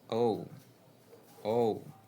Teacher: If you start with the sound O and glide to the sound U, you get the diphthong O.